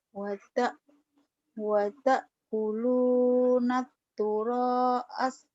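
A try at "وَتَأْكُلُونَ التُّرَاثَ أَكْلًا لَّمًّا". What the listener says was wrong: turosa. Turosa ini bukan asa, ini alifnya memanjang hijau warnanya. Turosa. Wata watakuluna turasa aklan lamma.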